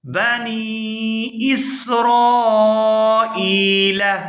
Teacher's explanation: یہاں نون کو یا ساکن کے ساتھ ملائیں گے کیونکہ یہ یائے مدہ ہے، اس لیے نون کو کھینچ کر ادا کیا جائے گا